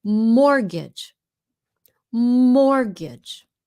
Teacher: You don't pronounce the T.